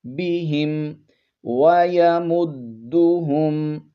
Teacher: با کے نیچے زیر ہے اور ہا کے نیچے بھی اس کو پڑھیں گے بہم، زیر کو زیادہ لمبا نہیں کرنا